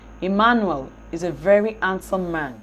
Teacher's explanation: In addition to this, the stress to be assigned to the three content words will be graded such that man, the last stress syllable in the group, will be assigned the nuclear stress, which is the most prominent stress · In the sentence, Emmanuel, handsome, and man will be assigned stress while is and a will be left unstressed